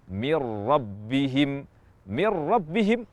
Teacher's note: Nun Sakinah tidak kita baca dan yang kita baca adalah huruf ro tanpa ada sisa huruf nun sama sekali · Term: bila ghunah, idgham bila gunnah